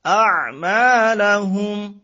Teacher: আইন শব্দটা তো কণ্ঠের মাঝখান থেকে হবে